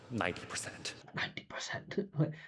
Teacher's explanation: It sound like he was whispering when he said that.